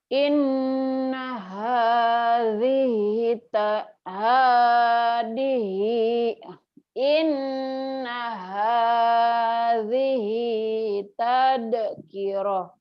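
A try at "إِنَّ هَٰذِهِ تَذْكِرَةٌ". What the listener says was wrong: Jangan tad orang Sunda tuh tad. Tal ya. Tal ya lagi. Inna hadhihi tazkirah.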